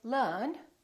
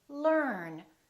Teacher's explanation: So the American R is never silent. It's not silent at the end of the word and also before another consonant.